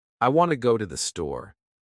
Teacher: The words want, go, and store are stressed. The other words I, to, and the are much faster and softer.